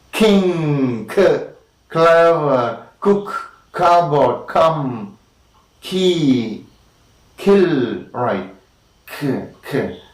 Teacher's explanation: The active articulator is the back of the tongue. Back of the tongue is lifted up, and the back of the tongue is against the back of the soft palate. Soft palate is also called the velum.